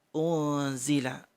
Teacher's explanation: Ada nun sukun bertemu za. Unzila. Didengung 3 ketukan.